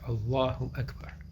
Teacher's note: one cannot, for example, elongate the alif or the A sound in like Allah or Akbar. · in the word Allah, the lam or the L sound is elongated